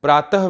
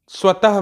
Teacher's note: विसर्ग का उच्चारण ह ध्वनि के समान होता है